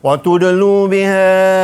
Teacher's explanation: dal ni qalqalah sughra, jadi bacanya berdetak sikit